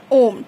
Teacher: फिर प्लुत स्वर। मतलब कि इसको उच्चारण करने में हस्व स्वर से और दीर्घ स्वर से ज्यादा समय लगता है